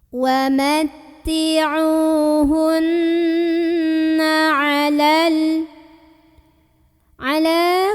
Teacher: huruf nunnya ini didengungkan, ditahan dulu kurang lebih 2 harokat sampai bergetar halus ke hidung. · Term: gunnah musyaddadah